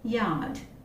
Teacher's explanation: It is a voiced unrounded palatal semi-vowel since the vocal cords vibrate